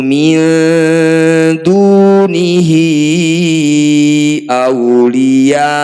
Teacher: Kemudian bertemu dengan Hamzah ini disebut bacaan madsilah qwilah cara bacanya Hi yang bertanda layar ini kita panjangkan lima harakat